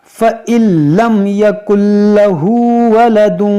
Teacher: یہاں نون ساکن کے بعد لام ہے تو یہاں پر ادغام کریں گے